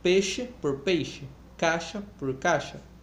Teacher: Perda da distinção entre vogal e o ditongo antes do palatal.